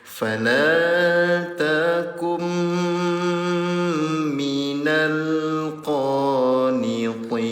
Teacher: Nun sukun bertemu dengan huruf mim. Dengungkan cara bacanya selama 2 harokat.